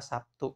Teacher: Untuk mencocokkan ya, mengadaptasikan bunyi tidak bersuara dengan bunyi bersuara, maka B di sini berubah menjadi bunyi tidak bersuara. B bunyi bersuara sedangkan P bunyi tidak bersuara.